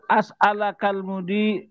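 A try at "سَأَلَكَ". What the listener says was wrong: Bukan asal asa ala kak. Sa-nya patah. Bukan as'aluka, asa'alaka.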